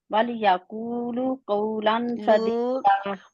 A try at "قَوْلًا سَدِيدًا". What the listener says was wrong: یہاں پہ اخفا اچھی طرح نہیں ہوا آپ کا، قولا قولا سدیدا۔